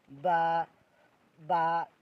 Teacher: বা দুটি ঠোরের মাঝখান থেকে উচ্চারিত হবে · বলেন আমার সাথে, ঠোঁট মিলিয়ে বলেন আলিফ আলিফ বা বা। দুটি ঠোঁটের মাঝখান থেকে উচ্চারিত হবে বা।